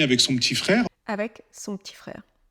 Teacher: Et parce que l'on parle très rapidement et que l'on a cette contraction, le P de petit, il est finalement à peine prononcé